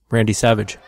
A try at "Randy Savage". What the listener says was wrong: Well, actually, the last name is pronounced Savig, not Savage, but yeah, it's happened 1,000 times, so.